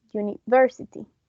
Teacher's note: So the word university, or I think those are the only two ways to pronounce it, has is the primary stress on the third syllable